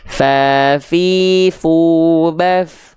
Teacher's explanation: ujung gigi seri atas kita nempel ke perut bibir bawah bagian dalam yang basahnya.